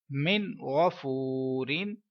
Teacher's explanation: आगे चलते हैं, नून साकिन है, हुर्फ हल्किया आ गया, इसके बाद इजहार का रूल है, गुन्ना नहीं करेंगे। इधर वाव मद्दा है क्योंकि वाव साकिन से पहले पेश है, लिहाजा 1 सेकंड तक लंबा करेंगे।